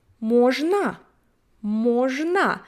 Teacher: It's O, but it's not stressed, so it would sound as A. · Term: vowel reduction